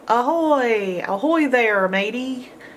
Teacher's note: ahoy starts with an A, but it's not quite A, it's making its schwa sound